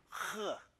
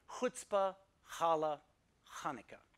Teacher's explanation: with this kind of friction noise coming from the back of your mouth